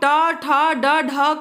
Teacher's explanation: जब हम ट, ठ, ड, ढ का अड़ा का उच्चारण करते हैं तो हमारी जीभ जो है उस मूर्धा को जाकर स्पर्श करती है, टच करती है, तब जाके हम ट, ठ, ड, ढ अड़ा का स्पष्ट रूप से उच्चारण करते हैं।